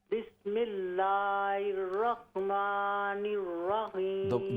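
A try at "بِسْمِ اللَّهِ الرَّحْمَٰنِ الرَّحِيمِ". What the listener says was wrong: दोबारा आपने एर पढ़ा, बिस्मिल्लाह एर ना, हा को दुरुस्त कीजिए। हे हा, बिस्मिल्लाहिर्रहमानिर्रहीम।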